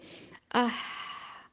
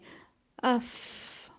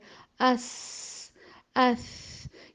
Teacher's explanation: ان کی ادائیگی کرتے وقت آواز چلتی ہوئی واضح طور پر محسوس ہوتی ہے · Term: نرم حروف